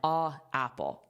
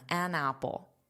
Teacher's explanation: A apple you have to pause but an apple you can connect it.